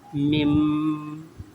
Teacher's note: the short meem will be pronounced. Okay, and noon saakin will be silent. · Okay, the definition of iqlab or qalb is if after a noon saakin or tanween appears a ba, then the noon saakin or tanween will be changed into a silent meem, and it will be read with a light nasal sound, and it will be shown over ba.